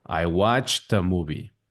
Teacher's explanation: Puede ser un poquito complicado porque si lo pensamos tiene T, che, T y esa combinación de sonidos no lo tenemos en español